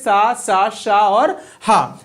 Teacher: जो घर्षण या रगड़ खाकर निकलते हैं। संघर्ष व्यंजन कहलाते हैं या संघर्षी व्यंजन कहलाते हैं। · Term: ऊष्म व्यंजन